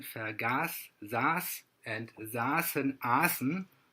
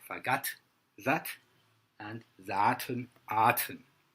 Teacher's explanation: Veldeke's native dialect, Limburgisch, did not make the shift and conserves the Germanic t. The High German vergaß, saß, and saßen, aßen also work in Limburgisch, where they are vergatt, satt, and saten, aten.